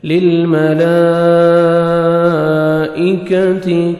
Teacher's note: کاف کو باریک پڑھنا ہے اور تا کو بھی باریک پڑھیں گے